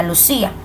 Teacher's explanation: Y estamos frente a un hiato acentual cuando tenemos una vocal abierta más una vocal cerrada o inversa y el acento siempre va a estar en la vocal cerrada